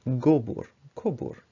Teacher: We could also use vowel harmony and have the prefix be dependent on the root and have gavar, kavar, but gobur, kobur. So the roundedness of the vowel triggers a roundedness in the prefix as well